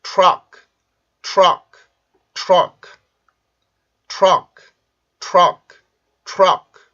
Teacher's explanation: 지금 T 발음이 R 발음 바로 직전에 있고 여기에 강세가 있죠. 그러면 T 발음이 R 발음의 영향을 받게 되는데 이때 그러면 T가 입술이 같이 나오면서 발음이 되겠죠. 그러면 tur, tur, tur 이렇게 발음을 해줘요.